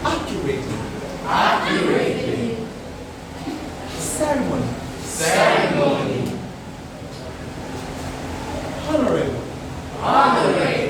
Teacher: 4 syllable words. And then the stress has to be on the first syllable of the 4 syllable words.